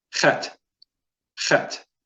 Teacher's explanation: so it's a gentle clearing of the throat. It's pronounced from the back of the throat.